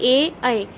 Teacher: इसके बाद देखिए ए आए, कंठ और तालव्य, इसमें क्या हो रहा है, मेरी जो मैं जब बोल रही हूँ ए आए, इसमें कंठ से आवाज आ रही है और तालव्य का भी प्रयोग हो रहा है, तालव्य को वो छू रही है हमारी जीभ।